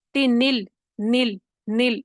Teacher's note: وصلی کو بیچ میں سے گرا دیں گے، تنل، نل، نل، نون ڈائریکٹ جا کر لام سے مل جائے گا